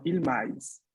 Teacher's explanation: Esta es una palabra muy parecida al español, pero el acento está en la A, ¿vale?